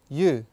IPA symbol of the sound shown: u: